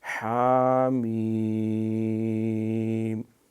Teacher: یہ ہا وہ حلوے والا جو ہے یہ گلے کے اندر سے اس کو ادا کیا جاتا ہے